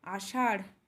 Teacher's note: slightly র এর সঙ্গে হ এর সাউন্ডটি মিক্স হয়ে যাচ্ছে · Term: ঢে বিন্দু র